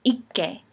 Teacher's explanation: when k is in a geminate place, it sounds like k, an unvoiced velar stop